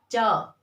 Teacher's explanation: च वर्ग का उच्चारण स्थान तालव्य यानी हमारा तालु। · जीभ ऊपर टच हो रही है च, छ, ज अपना आप ही ऊपर जा रही है तभी आवाज बाहर आ रही है। झ, या अब जीभ को आप नीचे रखिए तब बोलिए आप च।